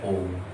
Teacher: जिसके उच्चारण में 2 मात्राओं से अधिक का समय लगे तो प्लुत